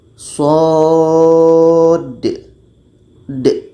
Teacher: Karena ada dal mati di ujungnya. Maka dibaca dengan qalqalah.